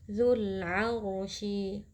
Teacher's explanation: Alif lam di sini merupakan alif lam qamariyah karena alif lamnya bertemu dengan huruf ain yang merupakan huruf qamariyah. Jadi lam sukunnya dibaca dengan jelas.